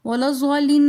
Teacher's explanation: ولا الضالین میں مد ہو رہی ہے، بڑی مد، تو لہٰذا اس کو ہم 5 فنگر کی مقدار کھینچ کر پڑھیں گے۔